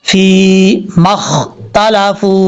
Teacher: اوپر والے جو دو دانت ہیں ان کا کنارہ نیچے والے ہونٹ کی تری والی جگہ پہ لگے گا تو فا پڑھا جائے گا. اب فا کے بعد جو یا ہے یہ یا مدہ ہے.